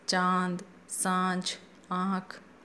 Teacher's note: चंद्र के समान यानी कि आधे चंद्र के समान जो मात्रा होती है और उसके ऊपर बिंदु लगा होने के कारण से चंद्र बिंदु भी कहा गया है। ये स्वर होते हैं जिनका उच्चारण नाक और मुंह दोनों से होता है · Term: अनुनासिक